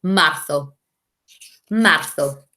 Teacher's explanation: Remember, the Z in Spain makes a th sound.